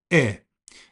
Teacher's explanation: I is a near close, near front, lax vowel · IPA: /ɪ/